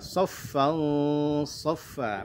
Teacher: Kemudian saffan saffa ada fathatani bertemu dengan huruf shad. Di mana huruf shad adalah huruf tebal, maka ikhfa-nya juga jadi tebal.